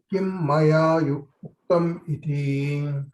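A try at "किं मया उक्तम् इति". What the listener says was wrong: Uktam, not Yuktam.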